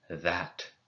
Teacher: make a th sound but using your voice box like in the word that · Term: voiced dental fricative